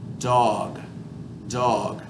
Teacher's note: when i say a d sound i'm going to put the tongue behind the teeth